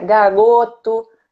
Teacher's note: Como se fosse um R de garganta